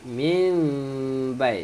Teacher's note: nak baca dia, bunyikan huruf mim, jangan bunyikan huruf nun